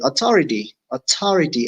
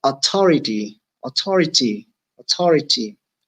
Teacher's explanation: In some accents of English, you do not pronounce it as th. Rather, you just pronounce it as t, like in Ireland.